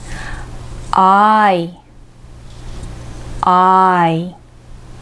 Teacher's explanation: 日本語の愛、ラブの愛よりもですね、顎をずっと下に下げます。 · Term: 二重母音